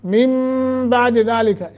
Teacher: نون ساکن کے بعد با ہے، میم پڑھیں گے یہاں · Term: اقلاب